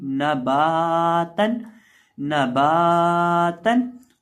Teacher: जिस भी हरफ के साथ अलिफ हो, वाव हो या हो उसको लंबा करके पढ़ा जाता है। तो बा को हम एक अलिफ के बराबर लंबा करके पढ़ेंगे, एक अलिफ के बराबर खींच के पढ़ेंगे